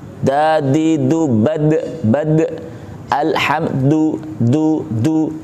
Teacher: Ujung lidah menyentuh gusi.